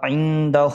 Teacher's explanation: نون ساکن کے بعد دال ہے، اخفا ہوگا، ایک الف کے برابر ناک میں آواز چھپا کے پڑھیں گے